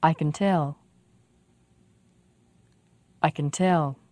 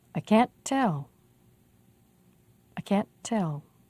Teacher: be sure to make the can very short be sure to make the vowel in cant very clear